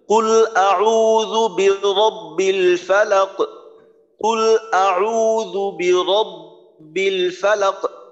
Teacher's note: কুল বলার পর আওয়াজটাকে বন্ধ করা যাবে না, আওয়াজটা চালাই নিতে হবে। কুল আউযু বিরাব্বিল ফালাক, কুল আউযু বিরাব্বিল ফালাক, এভাবে আওয়াজটাকে চালাই যেতে হবে, আওয়াজটাকে বন্ধ করা যাবে না।